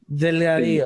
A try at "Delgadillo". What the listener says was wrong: Delgadillo. You say Delgadillo. You put the emphasis on the del. Delgadillo. Delgadillo.